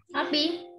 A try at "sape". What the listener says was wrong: Sape, pakai E, bukan sapi, sape.